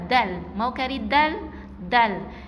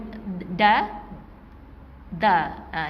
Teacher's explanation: Dilantunkan hujung lidah ke pangkal gigi kacip atas ni jadi dia macam bunyi melantun jadi bukan da, jadi dal.